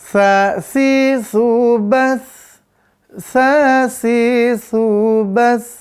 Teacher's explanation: Dia di ujung lidah, makhrajnya ujung lidah, ujung gigi seri atas. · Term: huruf sa